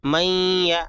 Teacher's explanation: میم یا زبر میں نون سائلنٹ ہوگا، نون سے پہلے جو حرف ہوگا اس کو بعد نون کے بعد والے حرف سے ملا کر پڑھیں گے. تو میم کو یا سے ملائیں گے، نون سائلنٹ ہو جائے گا · یہاں پہ دیکھیے نون ساکن ہے، نون ساکن کے بعد یا آیا ہے تو یا کیا ہے، یہاں پہ کیا ہے ادغام مع الغنہ ہوگا، آواز کو ناک میں چھپا کر پڑھیں گے